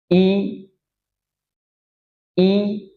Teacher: Jadi kalau fathah taba'ud baina syafatain, kalau kasrah taqarub. Taqarub, jadi tidak seperti fathah bukaannya, jadi lebih rapat. Istilahnya tersenyum. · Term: harokat kasrah